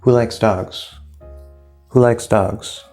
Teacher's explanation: All three stressed. Dogs is going to be the highest.